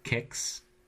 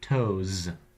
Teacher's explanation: sometimes the plural s is pronounced as an S like kicks and sometimes it's pronounced as a Z like toes